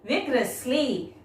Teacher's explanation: When pronouncing, stress on the first syllable